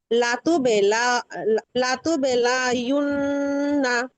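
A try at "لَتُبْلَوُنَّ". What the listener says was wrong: আপু, আপনি কিন্তু লামের পরেরটা ইয়া পেশ উচ্চারণ করছেন, ওয়াও আছে এখানে আবার।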